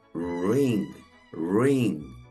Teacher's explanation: que es muda y nos queda una sílaba cerrada que termina en consonante O sea que usamos el sonido cerrado de la i